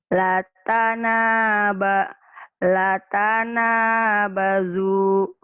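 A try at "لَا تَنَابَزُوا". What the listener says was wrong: La-nya panjang. Latanabazu. Latanabazu.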